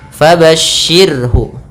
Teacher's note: rnya tarkik jangan fabasyir jangan dibaca ro tebal